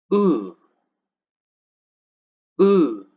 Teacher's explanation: Close, back, rounded. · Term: Sound U